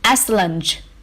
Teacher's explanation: The stress for this word is on the first syllable.